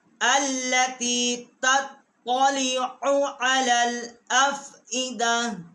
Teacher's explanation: اور تطلع کی عین جو ہے اس کو بھی حلق سے نکالنا ہے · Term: حروف حلقی